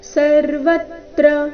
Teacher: ಸರ್ವತ್ರ ವ ಮೇಲೆ ಆಘಾತ